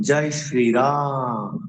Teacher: যখন বলি রাম মানে প্লুতস্বর, অর্থাৎ 2 তালের অধিক